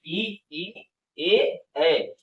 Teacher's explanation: छोटी बड़ी ई ए और ए ये जो चारों स्वर है ये जीभ के अग्र भाग से उच्चारित होते है